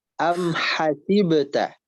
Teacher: Coba haknya dihembuskan, dilembutkan ya. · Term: H lembut